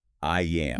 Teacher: when you say I am naturally, it spawns a tiny invisible Y. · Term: intrusive sounds